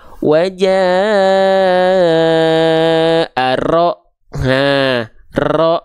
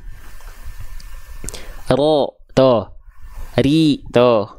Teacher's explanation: Jadi bukan wajah rabbuka, enggak, tapi wajah ro. Jadi kalau dihitung-hitung tuh getarannya paling cuma 1 sampai 2 getaran. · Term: takrir